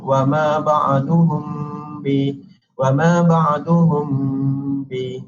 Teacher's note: Ini menunjukkan kepada ifa' syafawi, dan satu-satu hurufnya adalah huruf ba sahaja, satu huruf sahaja. Dan bacaannya adalah secara dengung, tetapi dengung dia hendaklah ditutup mulut dengan huruf mim dengan bacaan wa ma ba'duhum bi, wa ma ba'duhum bi, iaitu secara dengung 2 harakat dan seterusnya.